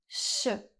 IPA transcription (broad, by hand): ʃ